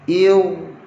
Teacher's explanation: Jangan dibaca dengan irji'un. Mesti hamzah wasal tu nipis. Ra saja tebal.